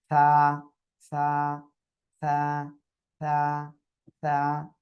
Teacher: জিহ্বার আগা, এই 2 দাঁতের আগায় লাগান, লাগিয়ে উচ্চারণ করেন। সা সা সা সা সা, হালকা বাতাস বের হবে।